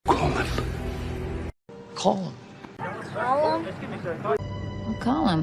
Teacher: listen for the h that isn't there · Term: silent h, silent H